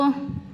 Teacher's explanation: Nun bertemu Sin ini ikhfa Nun bertemu qof juga sama ikhfa jadi dia dengung